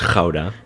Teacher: It has that K sound. Very guttural G, yeah.